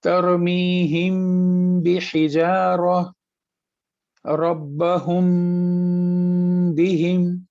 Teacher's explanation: جب میم کے بعد با آتا ہے تو ہم اس کو اس میم کو ناک میں چھپاتے ہیں اور پھر با پڑھتے ہیں